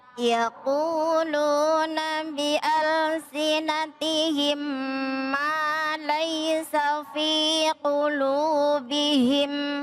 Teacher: mim mati bertemu dengan mim dibaca idgam biguna